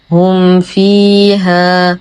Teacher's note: لدينا ميم ساكنة وبعدها حرف الفاء، الحكم إظهار شفوي مع غنة ناقصة